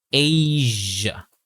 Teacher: that first A sound is a long A sound, and we use a Z sound for the S sound.